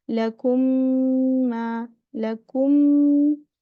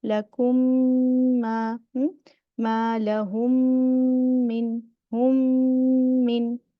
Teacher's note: First meme make gunna. The second meme make gunna. It is the highest level of gunna because it comes with the shadda.